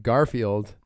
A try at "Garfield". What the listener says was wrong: Yeah, you just put the emphasis Garfield. On the wrong part.